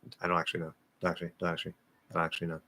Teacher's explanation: That doesn't have to be super, super fast. But especially if you're speaking fast, yeah, we're probably going to drop that NT